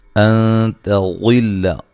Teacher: ان تضل تا کو باریک، نون ساکن کا یہاں اخفا ہے باریک. غل غاد کو موٹا ادا کریں گے اور غاد کو لام کے ساتھ سختی سے ملائیں گے.